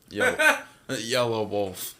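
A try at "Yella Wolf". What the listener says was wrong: It's not Yellow, it's Yella.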